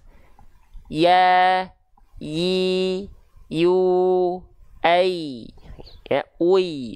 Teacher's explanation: Jadi ibaratkan ini adalah tengah lidah kita, ini lidah kita nih. Tengah lidahnya naik ke atas. Jadi bukan di bawah, tapi naik ke atas. · Nah, itu pasti tengah lidah kita naik ke arah langit-langit. · kalau pengen tahu makrotnya dia dilafalkan dari tengah lidah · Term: huruf ya